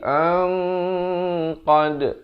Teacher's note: di sini hukum ikhfa hakiki, tetapi dibacakan dengan tebal, samar dengan 2 harakat. Asalnya an qad jadi ang qad, baru masuk qad 2 harakat.